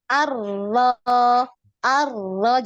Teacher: Jadi dia nabar ya, ditinggikan suaranya. Arlo, ir, iri, iri, ya, iri, urlu, arro, iri, uru, roro, riri, ruru, Hmm.